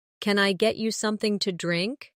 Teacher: In natural speech, something to often becomes something ta.